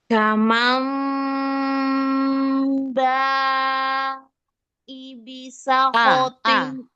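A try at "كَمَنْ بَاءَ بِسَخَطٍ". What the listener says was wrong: Hamzanya A, bukan I. Ya, mat wajib itu iklab di sini nun ketemu ba, nun sukun ketemu ba. Iklabnya jangan lebih panjang dari mat wajib.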